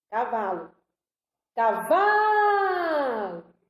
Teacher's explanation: Paroxítona. A sílaba tônica é a penúltima.